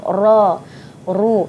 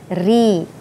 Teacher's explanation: Ra ditebalkan bila baris atas, secara umumnya bila baris atas dan baris hadapan kita sebut ra. ru. Tapi baris bawah dia jadi nipis, ri. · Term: hukum bacaan ra